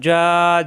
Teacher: জিহ্বার মাঝখান উপরে তালুতে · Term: জিম